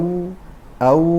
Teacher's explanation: او از هر دو لب دو مخرج دارد یا بیم که مخرج واو به همراه یعنی فراغ یا گشادگی میان دو لب